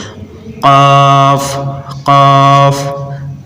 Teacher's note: কফ এটা হচ্ছে জিহ্বার গোড়া তার বরাবর উপরে লাগাবো